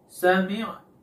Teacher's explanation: Sami'na. Di sini ketika mengucapkan mimnya dan nunnya, bunyinya tidak keluar dengan sempurna. Disebabkan karena hidungnya tertutup. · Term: gunnah